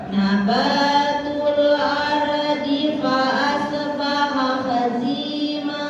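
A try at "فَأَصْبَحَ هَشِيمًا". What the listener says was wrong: Tinggal shodnya. Fa asbaha. Jangan lepas. Jangan dipantulkan. Fa asbaha. Nah, tahan. Sekarang shinnya Bu. Hashiman. Itu sudah bagus, cuma di huruf sukun ya. Selain qalqalah jangan dipantulkan. Kayak qad, ya, terus juga lam, ro, itu tidak dipantulkan.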